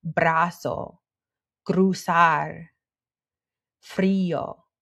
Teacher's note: our R is rolled when it comes after a consonant at the beginning of a new syllable